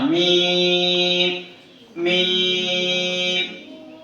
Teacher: मीम दोनों होठों के खुश हिस्से से अदा होना